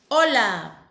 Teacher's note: we do not pronounce the letter H. We begin only by pronouncing the O